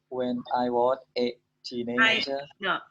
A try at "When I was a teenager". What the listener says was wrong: When I was, slowly. When I was, not what, was. When I was a teenager. A teenager. Teenager.